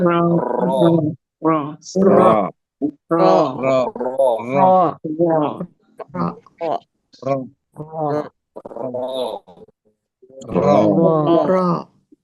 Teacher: Kemudian kita sebutkan dengan adanya getaran ya. Jadi harus ada dengan getarnya. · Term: huruf ro